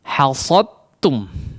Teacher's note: Langsung seolah hanya ada huruf ta yang bertasydid ya. Tidak ada sifat daripada huruf dal ya, langsung masuk kepada huruf berikutnya atau huruf ta. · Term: idgham mutajanisain